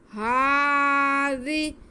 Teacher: الف کے برابر کھینچیں گے آگے زال کے نیچے زیر ہے زال کو نرمی سے پڑھنا سیٹی کے آواز نہ آئے لیکن اسے کھینچنا نہیں ہے